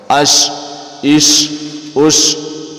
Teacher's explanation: شین بھی سیٹی کی سی آواز نکلے گا، لیکن اس کو ہم نے دبا کے پڑھنا ہے تھوڑا سا